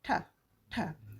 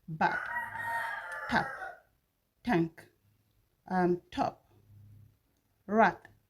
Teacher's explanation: the tip of the tongue touches the alveolar ridge to produce the ta sound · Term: alveolar sound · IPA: /t/